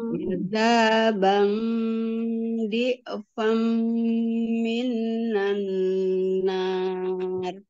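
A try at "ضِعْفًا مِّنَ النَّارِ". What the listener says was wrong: jangan min, jangan min, minan, langsung minan.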